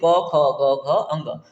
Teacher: जो कंठ से आए, जैसे क ख ग घ अंग, तो कंठ से आती है इसलिए इनको कंठ ध्वनियां कहते हैं।